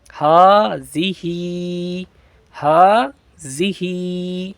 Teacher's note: آخر والے ہا کو، دونوں ایک ہی ہا ہے نا، تو دونوں کو ایک الف کے برابر کھینچ کر پڑھیں گے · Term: کھڑا زبر